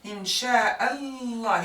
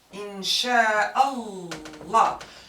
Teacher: since we extend the lam during the pronunciation, it means that we have the long vowel alif, but we don't mark the whole body of it.